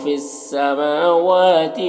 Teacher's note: میم اور واو دونوں میں کھڑا زبر ہے، دونوں کو ایک الف کے برابر کھینچیں گے۔